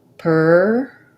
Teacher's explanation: I say pertinent a little bit more like the word important, where we use some stopped T's in there.